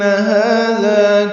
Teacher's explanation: ہاذا دونوں کو برابر لمبا کریں گے، ہا سے حلق سے ادا کریں گے، دال نرمی سے پڑھیں گے